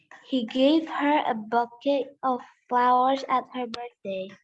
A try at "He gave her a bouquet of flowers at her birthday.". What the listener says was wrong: Oh, perfect. Yes.